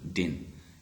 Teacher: not have any uh aspiration here in the second example din in the word din you won't find any puff of the air